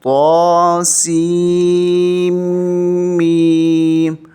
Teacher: سین کو میم کے ساتھ ملاتے ہوئے نون کی آواز ناک سے نہیں آنی چاہیے